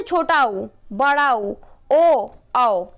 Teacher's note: वृत्तमुखी स्वर। जिन स्वरों का उच्चारण करते समय ओष्ठ, जो हमारे ओठ हैं वो गोलाकार हो जाते हैं